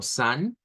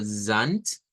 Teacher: en el inglés es una S silbante y una D al final, mientras que en el Deutsch es una S vibrante